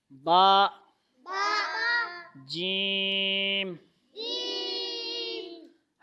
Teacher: حروف شدیدہ، سخت آواز. با کی بھی اور جیم کی بھی.